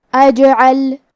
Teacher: کلمت اجعل میں حرف الجیم پہ جزم ہے لہذا ہمیں جیم کو قلقلہ سے پڑھنا ہے، اور قلقلہ کا معنی ہے حرف ساکن کو ہلانا، تو ہم حرف الجیم کو ہلاتے ہوئے یہ کلمہ کو پڑھیں گے